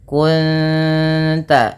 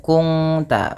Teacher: menyamarkan bunyi suara nun kepada ta dan ditahan bunyi dengungannya 2 harakat. Kunta bukan kungta, nanti berbeda bunyinya. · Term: ikhfa hakiki